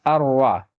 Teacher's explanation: لکھا رہے گا ان را، لیکن پڑھا جائے گا اروا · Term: ادغام